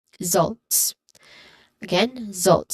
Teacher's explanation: starts with a buzzing sound